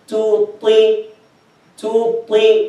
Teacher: Even the ta has kasra, still it's heavy, but it's in the least level of heaviness